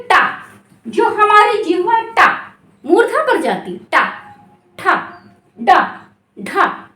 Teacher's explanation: मूर्धा से होती है। ठीक, तालु के ठीक पीछे का जो भाग है वो क्या कहलाता है? मूर्धा कहलाता है। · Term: मूर्धन्य ध्वनियां